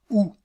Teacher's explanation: empêcher l'air de passer par la cavité nasal la voyelle ou la voyelle ou est une voyelle postérieure c'est-à-dire que la langue est située en arrière